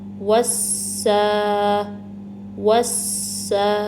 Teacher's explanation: Number 1 سین کی سیٹی واضح کی ہے میں نے، نمبر 2 الف مدہ کو 2 کاؤنٹ سٹرچ کرنا ہے، اور نمبر 3 سین پہ تشدید ہے تو تھوڑا ٹائم دیں گے، کیونکہ جب آپ سین کو کھولیں گے نا، سین تشدید کو، تو اس میں ایک ساکن سین ہے اور ایک متحرک، یعنی ایک سین ایسا ہے جس پہ حرکت لگی ہوئی ہو، ٹھیک ہے۔